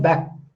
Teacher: back of the tongue is touching soft palate, back. So that type of is unreleased stops.